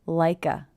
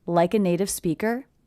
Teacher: I hear the K linking to the schwa, like a. Like a native speaker.